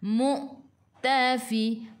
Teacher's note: Hamzah baris sukun kena baca dengan putus.